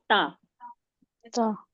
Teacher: ता का मखरज है जबान की नोक को ऊपर के सामने के दो दांतों की जड़ में जड़ में हां जड़ में लगाने से ता अदा होता है।